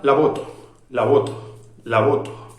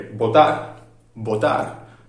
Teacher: los dos labios se cierran y no dejan pasar el aire